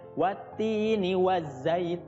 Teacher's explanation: menjadi mad arid lis sukun ya. Panjangnya bisa 2 sampai 6 harokat.